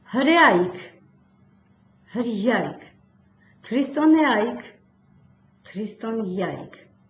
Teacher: Ե այ եռաբարբառը բաղաձայնից առաջ արտասանվում է յայ